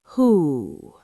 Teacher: the sound who pronounced like the English word who but with a rounder, deeper resonance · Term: hu